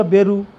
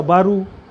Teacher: शब्दारंभीचा व जो असतो त्याचा ब होतो.